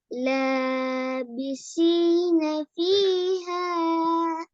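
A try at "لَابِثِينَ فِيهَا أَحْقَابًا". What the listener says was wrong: لابسين فيها ஒவ்வொன்றதான் வருது. மொத்தமா சேர்த்து ராகத்துல வருது இல்லையே.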